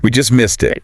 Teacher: we just missed it emphasizing just to show how close they were